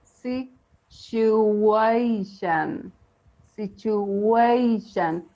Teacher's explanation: we have a hidden W on the third syllable